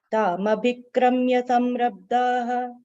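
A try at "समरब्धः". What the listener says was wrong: Samrabdha only, not visarga.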